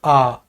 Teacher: बड़े आ को बोलने में आ पूरा मुंह खुलता है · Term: विवृत